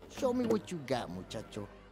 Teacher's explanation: When words that end with a T sound are followed by words that end with a Y sound, they merge into a CH sound. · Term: connected speech